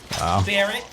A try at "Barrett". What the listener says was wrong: Why are you putting an S on Barrett? You're saying Barrett's. Barrett. Barrett.